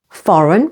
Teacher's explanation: Foreign, with the stress on the first syllable